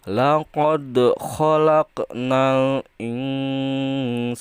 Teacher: qaf juga termasuk qalqalah sugro. Jadi bacanya harus dipantulkan